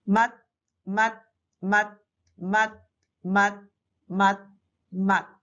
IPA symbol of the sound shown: 맏